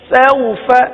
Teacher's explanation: اب یہاں حروف مدہ کی طرح کھینچیں گے نہیں. جب یہ واولین ہے تو حروف لین کو بغیر کھینچے بغیر جھٹکا دیے نرمی کے ساتھ پڑھتے ہیں، لہذا اس کو نرمی کے ساتھ پڑھیں گے.